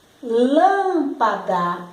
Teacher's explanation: A sílaba que mais se destacou foi lã. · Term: proparoxítona